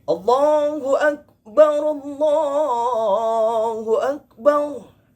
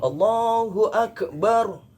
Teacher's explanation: Allahu Akbar yang seharusnya kaf, namun tanpa dia sadari keluar qalqalahnya